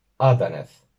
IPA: 'ɑ.dɑ.nɛθ